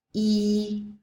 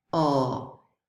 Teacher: you will notice that your tongue moves front, E, and back, O.